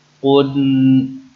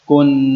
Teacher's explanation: قن یہ موٹا پڑھیں گے، کن یہ باریک پڑھیں گے